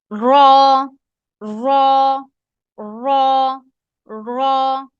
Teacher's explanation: اوپر والے دانت ہیں ان کی گم کے پیچھے لگاتے ہیں